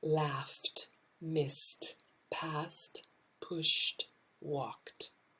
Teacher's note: The t goes with the unvoiced